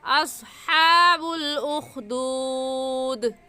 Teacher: مخارج کا خیال رکھ کر پڑھے اور ہا حلق سے نکال کر پڑھے